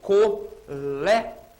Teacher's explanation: Colégio, vamos considerar aquele final iô, né? Falando rapidinho, como um ditongo. Esse tipo de palavra não deve ter aquele grupo final separado, hein?